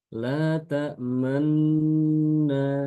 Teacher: Namun untuk memberitahukan kepada orang yang mendengarkan bacaan ini bahwasanya aslinya itu bukan ini bukan, tapi aslinya adalah itu ada dhamma, maka ketika dia mengidghamkan nun ke dalam nun berikutnya itu dengan sambil memoncongkan bibir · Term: ismam